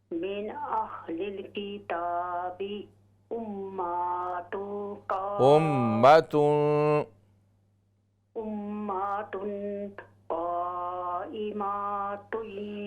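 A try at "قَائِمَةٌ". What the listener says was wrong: आप ज़बर को लंबा कर रहे हैं, क़ाइमा नहीं है, क़ाइमा, मीम ज़बर मा, ज़बर की मिक़दार इससे ज़्यादा नहीं है।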